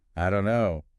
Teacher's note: And the vowel sound in don't might weaken too. It becomes really compressed.